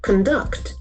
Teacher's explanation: There are two syllables and the accent falls on the second syllable.